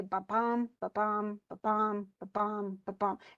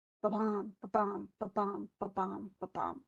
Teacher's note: that iambic foot goes unstressed, stressed, unstressed, stressed, but it does it 5 times